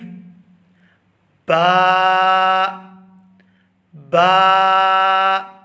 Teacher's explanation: ہونٹوں کو آپس میں ملائیں گے اور جب ہم ان کو کھولیں گے تو وہاں سے ادا ہوگی